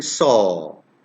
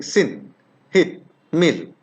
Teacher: when i'm saying saw it's rounded but when i'm saying sin hit mill it's flat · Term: unrounded